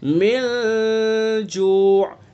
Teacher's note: اس میں غنہ کریں گے، اور غنہ بھی ناک کی نرم ہڈی سے ادا کریں گے، ناک کے بانسے سے، خیشوم سے ادا کریں گے، یعنی چھپا کر کے اس غنے کو کریں گے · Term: اخفاء حقیقی